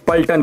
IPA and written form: pəlʈən (Paltan)